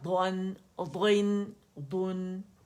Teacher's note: دانتوں سے وہ نرمی سے کناروں سے جا کے لگتی ہے زبان. ٹھیک ہے، تو دود زبان کے موٹے کنارے، دود فتحتین غن، دود فتحتین دون، دود، دود، دود، دود.